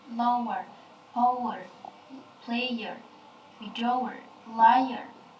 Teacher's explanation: three vowel sounds that quickly clip together. Jadi triphthong ini biasanya terdiri dari 3 sounds vowel.